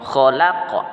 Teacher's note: Min syarri ma khalaq, kha berbunyi di kerongkongan